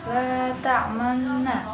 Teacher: bacaan ismam, yaitu cara membacanya dengan gerakan mulut dimajukan